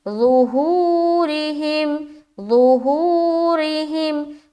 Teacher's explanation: مدہ ہو رہا ہے، واو ساکین اور اس سے پہلے پیش، را کو باریک رکھ رہے کیونکہ اس کے نیچے زیر آ گیا · پیش ہو، را زیر ری، ہا میم زیر ہم، ظہورہم، ظہورہم، ہوں میں کھینچ رہے کیونکہ واو مدہ ہو رہا ہے ، واو ساکین اور اس سے پہلے پیش، را کو باریک